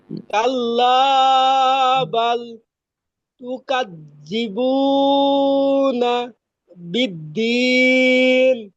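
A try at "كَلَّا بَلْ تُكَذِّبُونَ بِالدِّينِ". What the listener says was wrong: হ্যাঁ সুন্দর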